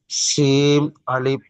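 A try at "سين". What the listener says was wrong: শিম নয়, শিম নয়, শিম নয়, সিন, সিন। লাস্টে দন্তেন্ন উচ্চারণ হবে, দন্তেন্ন উচ্চারণ হবে, সিন, সিন। শিম নয়।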